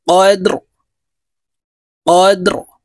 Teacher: রকে ওয়াকফের ক্ষেত্রে সাকিন করে ফেলবো